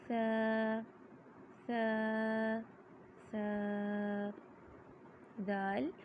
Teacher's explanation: سب سے پہلے ثا کی ادائیگی میں زبان کی نوک کو سامنے والے اوپر کے 2 دانتوں کے اندرونی کناروں سے نرمی سے لگا کر باریک آواز میں پڑھیں گے